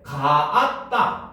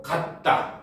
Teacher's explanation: 같은 모음이 연달아 발음될 때 하나의 모음이 발음되지 않는 현상이죠